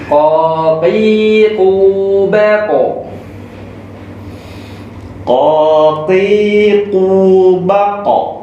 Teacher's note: Jadi yang pertama terletak di pangkal, di bagian paling belakang lidah. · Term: huruf Qof